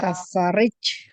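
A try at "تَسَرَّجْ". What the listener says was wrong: Nggak pernah nggak pernah kasro ya.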